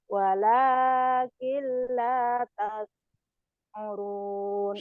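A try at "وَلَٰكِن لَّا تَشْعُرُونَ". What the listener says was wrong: Shinnya besar. Walakin la tash'urun.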